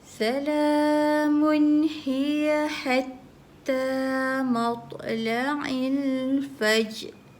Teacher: walaupun dia tanwin tapi tak boleh dengung sebab tanwin bertemu dengan ha.